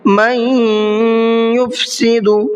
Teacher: من کے اندر نون ساکن ہے اور نون ساکن کے بعد میں یا آ رہا ہے، یہ ادغام یرملون کا قاعدہ ہے، تو یہاں پر غنہ کریں گے